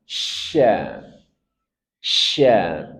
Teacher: Syin punya sifat tafasyi, menyebar dari tengah lidah semburkan dengan udara. Sya sya tanpa kita memajukan bibir sya sya di tengah lidah semburkan dengan udara tafasyi.